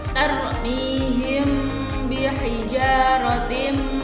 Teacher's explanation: Ikhfa syafawi yaitu apabila ada mim sukun atau mim mati bertemu dengan satu huruf yaitu huruf ba. Itu harus dibaca samar di bibir dan didengungkan.